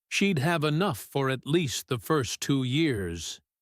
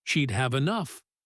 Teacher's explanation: Speakers very often lift their pitch slightly on the if clause, almost like they're leaving a question hanging in the air, some unfinished business, and then let their pitch drop and settle on the result clause as if closing a small door once the idea is complete.